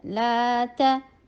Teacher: یہ الف صغیرہ جو ہوتا ہے وہ بھی بالکل الف کی طرح ہی ہوتا ہے تو لا کو لانگ کیا جائے گا کیونکہ الف سے پہلے لام کے اوپر فتح ہے